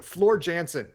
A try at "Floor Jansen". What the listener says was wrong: And you're pronouncing it wrong. It's Floor Jansen. It's an ah. It's not an eh. Not everything is eh in America.